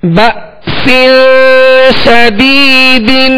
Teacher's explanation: با کے ساتھ حمزہ ساکنہ ہے، یہاں جھٹکا واضح کریں گے. سین، سین کے نیچے دو زیر کی تنوین ہے، آگے شین حروف اخفا میں سے، لہذا غنہ کر کے ادا کریں گے.